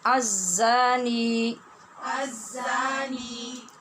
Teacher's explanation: الزا میں زا سیٹی کی آواز والی ہے اور شد کی وجہ سے شدت بھی پائی جائے گی۔ نی کے بعد یعنی نون زیر نی کے بعد یا ہے، جب زیر کے بعد ساکن یا ہو تو اس کو یائے مدہ کہتے ہیں۔